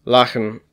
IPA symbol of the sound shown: x